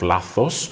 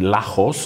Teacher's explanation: the alternation between th and h in lachos for mistake instead of lathos